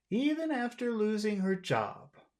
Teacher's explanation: we'll finish this word job just on a low tone